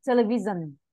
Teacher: G mà rung á. Rung rung á. Giống như G ngoài miền Bắc ấy.